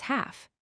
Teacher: we pronounce it as half. The L is silent. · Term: silent L